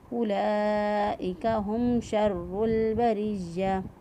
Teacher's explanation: وقف کی صورت میں گول تا جو ہے وہ ہا سے بدل جاتی ہے، اور گول تا کے نیچے جو اعراب ہوتا ہے وہ بھی پڑھنے میں نہیں آتا، تو ہم اس کو پڑھیں گے اولئک ہم شر البریہ۔